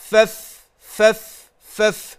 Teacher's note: من باطن الشفة السفلى مع أطراف الثنايا العليا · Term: الفاء